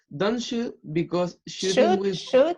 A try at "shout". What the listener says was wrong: Shoot or shout, remember? With pronunciation, except for shout.